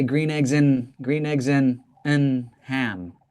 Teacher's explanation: we reduce the and to make it sound like one thing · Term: reduced or minimized